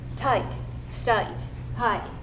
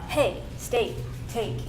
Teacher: they pronounce the sound A like I